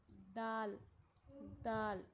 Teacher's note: यानी दांतों की जड़ पर नहीं बल्कि दांतों से थोड़ा सा ऊपर